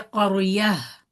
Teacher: Ta marbuta becomes ha when you are stopping on it. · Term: waqf of the ta marbuta